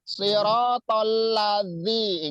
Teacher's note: zal itu ujung lidah ya dikeluarkan sedikit dan menyentuh gigi seri atas.